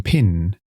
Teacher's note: The /p/ sound is voiceless, meaning you don’t use your vocal cords when pronouncing it.